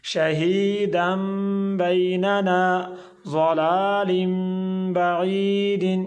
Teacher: تنوین کے بعد با آ رہی ہے تو ہم تنوین کو میم میں بدل رہے ہیں